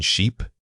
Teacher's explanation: For the e sound, truly stretch it out as you say it. It requires specific muscle movement in your cheeks and lips that is different from the short vowel.